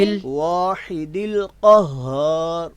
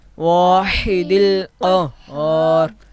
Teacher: اب یہاں پہ آپ نے واحد القہار لفظ پڑھا ہے، تو یہاں پہ دونوں ہا آ رہی ہیں. واحد میں ہا وسط حلق والی بڑی ہا، اور قہار ہر لفظ میں ہا جو کہ اقصی حلق والی ہے.